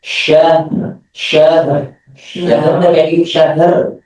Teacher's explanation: Karena huruf H sebelum ro itu dan huruf mim sebelum ro itu adalah bukan huruf qalqalah. Maka huruf H itu kembali kepada sifat asalnya yaitu mengalir.